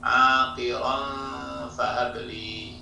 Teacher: dibaca samar, ya, atau disebut ikhfa, disertai dengan dengung